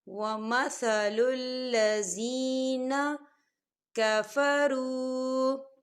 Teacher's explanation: وَمَثَلُ الَّذِينَ، وَمَثَلُ الَّذِينَ، یہ دیکھیں لذین، یہاں پہ یا ساکن ہے اور یا ساکن سے پہلے زیر ہے، تو یہاں پر یا مدہ ہو رہا ہے تو ہم اسے دو حرکت کے برابر کھینچ کے پڑھیں گے